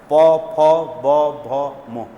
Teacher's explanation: होठ आपस में टकराते हैं तो इसको हम क्या कहते हैं इसको बोलते हैं ओष